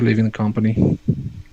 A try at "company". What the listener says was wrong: You kind of did come instead of come. So think of come here instead of calm, like feeling really calm, chill, relaxed. Think of come like come here, come, company.